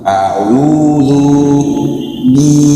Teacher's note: Membaca dengan penuh jiwa, yaitu dengan makhrajnya hamzah pada pangkal tenggorokan. ya. A'udzu bi, benar-benar mantap, bukan a'udzu, tapi yang benar a'udzu.